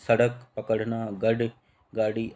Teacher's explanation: जिनका उच्चारण करते समय जीभ झटके से ऊपर आती, इसी से इन्हें उत्क्षिप्त व्यंजन भी कहते हैं।